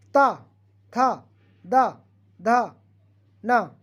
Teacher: इसका उच्चारण स्थान दांत से होता फ्रेंड्स। अगर आप बोलेंगे ये सारे वर्ण बोलिए और बोलने में आपके दांत टच ना हो, ऐसा हो नहीं सकता।